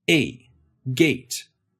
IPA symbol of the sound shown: eɪ̯